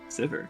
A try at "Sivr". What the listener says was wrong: S-I-V-R. vowel between the V and the R.